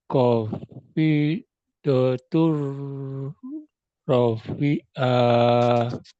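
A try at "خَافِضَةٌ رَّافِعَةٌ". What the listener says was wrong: oke, yang panjang, roknya Pak. Ada alif di situ.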